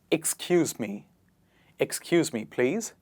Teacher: it does not start with ‘eh’, it starts with ‘ik’